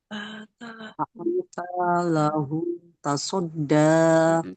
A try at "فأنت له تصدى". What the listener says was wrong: taknya nggak panjang ya. Taknya satu makhraj aja. Fa'anta lahu tasadda